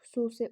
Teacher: Xüsusi u uzanır, xüsusi u uzanır və u qapalıdır. Bu şərtimizi ödədi. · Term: qapalı sait